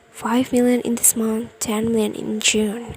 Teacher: So the word 5 is rise, and the word June is fall intonation. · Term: rise fall intonation